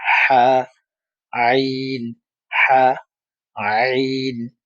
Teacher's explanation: কণ্ঠনালীর মধ্যখান থেকে যদি আপনি উচ্চারণ করেন, তাহলে আইন এবং হা এর উচ্চারণটা সঠিকভাবে হবে